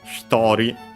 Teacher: then it becomes hitori, accent on the to. The he barely heard the I barely heard if at all of he, because it's between a voice consonants.